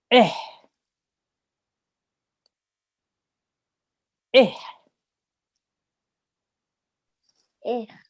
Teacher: And we have a ha, which is also a letter of the throat. The ayn is from the middle of the throat. The ha is from the bottom of the throat.